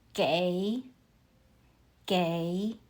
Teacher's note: 给 uses the third tone. Your voice falls and then rises.